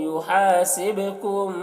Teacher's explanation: با میں قلقلہ ہوگا، با حروف قلقلہ میں سے ہے۔